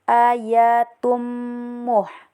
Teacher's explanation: Kemudian ada hukum idgam bigunnak. Jadi baca dengung dan dilebur selama dua harakat. Karena tanwin bertemu dengan mim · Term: idgham bi gunnah